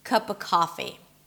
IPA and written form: kʌpə ˈkɑfi (cup of coffee)